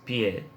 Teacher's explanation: Esta es una vocal semicerrada, oral, cuya producción también se lleva a cabo con los labios estirados.